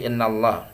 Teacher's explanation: yang bertasydid dibaca gunnah ya Innallaha itu tafkhim ya Allah dibaca lafaz Allah dibaca tafkhim tebal Kenapa karena sebelum lafaz Allah harakatnya fathah